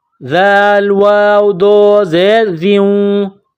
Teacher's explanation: ذال کو نرم پڑھیں گے، زبان کا سرہ تھوڑا سا باہر نکالیں گے ، ذال کو پڑھتے وقت ذال کے نیچے 2 زیر تنوین